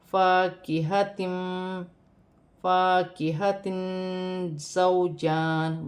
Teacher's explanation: واو ساکن سے پہلے زبر ہے تو واو لین بنے گی، اسے کھینچا نہیں جائے گا · 2 زیر کی تنوین میں اخفا ہوگا کیونکہ زا حرف اخفا میں سے ہے